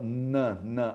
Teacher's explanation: Então você fala nã, nã, a língua toca no dente, nã de nariz. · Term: dental